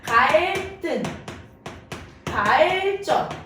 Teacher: 리을 받침 뒤에 연결되는 디귿, 시읒, 지읒은 된소리로 발음된다.